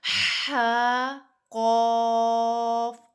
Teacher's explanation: ٹھیک ہے، ح جیم با جیم فا صاد قاف ضاد ضا، زبان ایک طرف لے جانی ہے، ضاد قاف قاف، دونوں برابر کھینچیں گے۔ ح قاف، ح کو 1 الف جتنا، قاف کو 3 الف جتنا